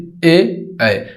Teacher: ध्यान रखिएगा, ये दोनों से बोला जाता है, कंठ और तालु से मिला के बोला जाता है ए ऐ।